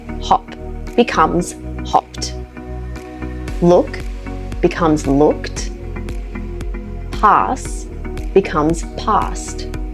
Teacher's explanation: for verbs that end in unvoiced or voiceless sounds again these ones here the e d ending sounds like a t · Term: the T sound